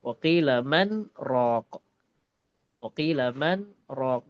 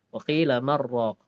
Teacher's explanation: Nah, pada qiraat kita hafazan asim dibaca jelas karena kita berhenti sejenak atau sakta pada huruf nun. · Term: saktah